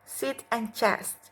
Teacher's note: Air is forced through tongue and alveolar ridge.